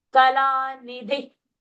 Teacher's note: Dhi is short, dhi is mahaprana, and the visarga is lifted and dropped.